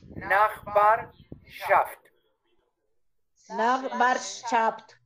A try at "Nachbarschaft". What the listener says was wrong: No termines con P, sino con T. Nachbarschaft.